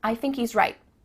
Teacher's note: Do you notice too at the end of the word right, there's no T sound?